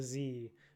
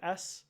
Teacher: If you're trying to if you're trying to feel it, you can just say S as an S versus Z as a Z and you can feel it vibrating versus not vibrating